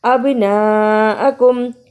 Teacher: با پہ قلقلہ بھی کیا اور بڑی مت کو بھی ادا کیا